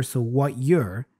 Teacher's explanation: So very often this You're gets reduced to a Yir, which is how we hear it here.